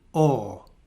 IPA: ɔ: